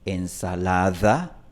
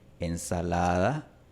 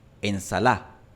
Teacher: Ensalada. La pronunciación exacta de esta D varía entre una fricativa, ensalada, una aproximante más suave, ensalada, o puede desaparecer por completo, ensalá.